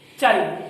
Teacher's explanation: लेकिन इसका सही उच्चारण जब हम करेंगे, बड़ विच्छेद तो सभी को पता चल चुका है कि ये है कि ले में भी ए छुपाया है, लेकिन चल को हम बोलते समय इसका सही जो उच्चारण करते हैं तो हम ले का ए नहीं बोलते, चल। तो हम जो है यहाँ पर जो है इसमें ले का जो है ए छोड़ देते हैं सही उच्चारण करने के लिए।